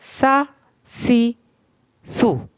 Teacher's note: सीन को हमने सीटी के आवाज़ के साथ पढ़ना है। सीन ज़बर सा, सीन ज़ेर सी, सीन पेश सू, सा सी सू।